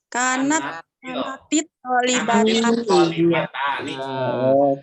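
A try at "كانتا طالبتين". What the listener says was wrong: Itu harus dibaca kanatit, nggak boleh kanat. Kalau kanat thalibatani berarti kananya belum berubah. harus dibaca kanatit.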